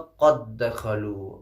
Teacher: قد دخلوا، دیکھیں اگر ہم ایسے پڑھیں تو بہت مشکل ہوگا، قد دخلوا، کیونکہ دال پہ جو ہے ساکن ہے اس لیے ہم قلقلہ بھی کریں گے یہاں پہ تو مشکل ہو جائے گا، اس لیے ہم ادغام جو ہے کر دیں گے، یعنی گویا یہ کہ ایک دال جو ساکن والا تھا وہ حذف ہو جائے گا اور دوسرا دال پڑھا جائے گا۔ قد دخلوا، قد دخلوا در اصل میں ہو جائے گا قد دخلوا، اور پڑھنے میں آسانی بھی ہوگی ہمیں۔